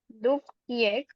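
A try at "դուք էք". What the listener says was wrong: yeah, but in this case, we have to pronounce this yeah as a. Narang n, not with ye, but with e, because in auxiliary verbs, we have to pronounce this ye as e.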